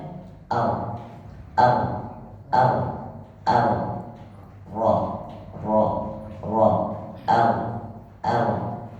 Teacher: Ro itu disembunyikan takrirnya jadi tidak dibaca Ar kita bisa merasakan getaran lidahnya ketika banyak terjadi maka